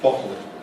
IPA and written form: ˈbɒtl̩ (bottle)